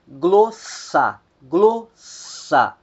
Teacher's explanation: a que vai soar mais forte é a primeira sílaba